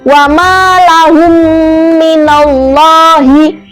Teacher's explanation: cara membacanya adalah seperti mim sukun itu bertemu dengan mim itu kayak merangkap gitu loh, atau ditasdidkan. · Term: idgham mimi